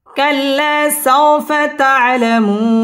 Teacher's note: কাল্লা সাউফা তা'লামু পেশের বাম পাশে জজম ওয়ালা ওয়াও মদের হরফ, মদের হরফের বামের হরফে ওয়াকফ মধ্যে আরজি 3 আলিফ টান দিয়ে ওয়াকফ করতে হবে